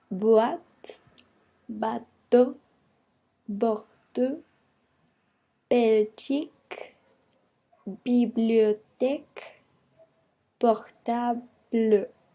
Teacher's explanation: los dos labios se juntan para poder hacer el sonido de la B